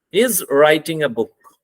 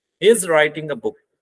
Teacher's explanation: Now, when I have pronounced this word book, so my tone starts falling down. मेरी जो आवाज थी वो नीचे गिरना शुरू होगी. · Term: falling tone